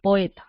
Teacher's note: Ahora tengo que identificar qué tipo de vocales son. O es abierta, E es abierta.